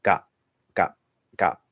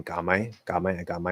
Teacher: if it's a little clearer then you can shift that t into a p because of the m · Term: shifting